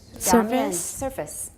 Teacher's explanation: It's just like service, but it's voiceless.